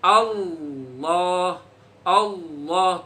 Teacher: lidahnya ditaruh di langit-langit tempat belakang gigi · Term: tafkhim